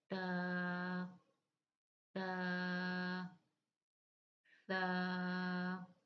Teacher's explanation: زبان کا سرا اور اوپر کے دانتوں کے اندرونی کنارے سے ادا ہوتا ہے۔